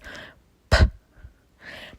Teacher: The letter P is actually like you're just puffing out a candle with no voice at all and no sound at the end.